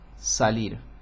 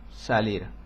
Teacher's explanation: En el centro y norte de España se pronuncia una S apical con la punta de la lengua sobre los alvéolos, delante de los alvéolos del paladar.